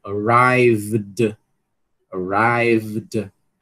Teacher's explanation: Som final V, vozeado, atrai vozeado